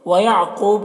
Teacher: قوف یہ حروف مستعلیہ میں سے، اسے پر پڑھیں گے